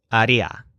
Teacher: ría is always the stressed syllable for the would version of any verb